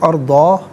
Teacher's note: اور علیحدہ پڑھیں گے تو ارضا، اسے یعنی کھینچ کر وقف کریں گے، ارضا، جیسے الف مدہ کو ہم پڑھتے ہیں